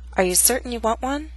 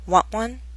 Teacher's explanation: This statement has two glottal stops, certain and want one. The final T is followed by a consonant sound, w, one.